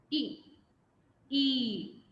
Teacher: a short one where the lips are slightly spread